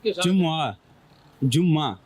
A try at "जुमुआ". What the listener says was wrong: जुम्मा पे आ गए फिर दोबारा। चले मैं थोड़ा सा बता देता हूँ, जीम पर भी पेश है, मीम पर भी पेश है। कुरान पाक में भी सूरह जुमुआ है, ठीक है, जुम्मा नहीं है। सही जो ये अरबी लफ्ज है ना, ये अरबी लफ्ज है, तो अरबी में जुम्मा नहीं है, वो है जुमुआ।